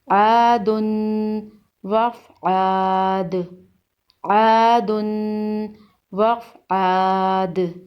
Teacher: دال کے اوپر دو پیش ہیں، دو پیش کو تنوین کہتے ہیں۔ تنوین کو غنہ کے ساتھ پڑھتے ہیں اور وقف کی صورت میں دال پر قلقلہ ہوگا۔ دال حروف قلقلہ میں سے ہے۔